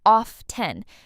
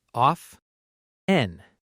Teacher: a lot of native speakers say often with a silent t